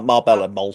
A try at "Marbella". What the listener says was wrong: Marbella, you don't say the L's. Say it properly. Marbella.